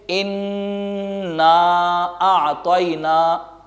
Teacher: سورۃ الکوثر میں شروع میں ان غنہ کریں گے، ناک سے آواز کو نکالیں گے